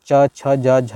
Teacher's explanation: तो ये मतलब च वर्ग कहाँ से आता है, तालु से आता है, ठीक है, तालु।